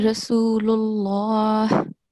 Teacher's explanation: the lam has to have a thick sound